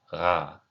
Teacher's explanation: The way I imagine it is trying to make a Y sound at the back of your throat. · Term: voiced velar fricative